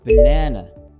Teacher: The first and last A become uh. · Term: schwa